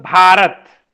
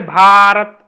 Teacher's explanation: लंबा खींच रहे भारत, भ पर जोर दे रहे हैं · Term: महाप्राण